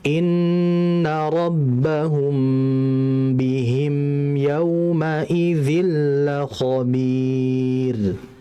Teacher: inna rabbahum, itu semuanya ada guna ditahan